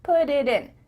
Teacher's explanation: the time to let the air come out of your mouth your tongue is just tapping the top of your mouth